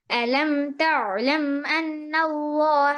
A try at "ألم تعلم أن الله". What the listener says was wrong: আইনটা আরেকটু পাতলা করে আইনটা আরেকটু পাতলা আলাম যেমন আলাম যেমন তা এরকম না হয়ে যায় তা না তা পাতলা করে হ্যাঁ আলাম তা'লাম আন্নাল্লাহ